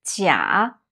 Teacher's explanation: When it means fake, false, it's a third tone. A low tone is 假.